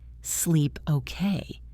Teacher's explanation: Notice how the tone goes up at the end. That rising intonation turns the statement into a question.